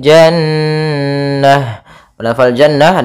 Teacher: ada bacaan ghunah yaitu Nun yang berharakat tasydid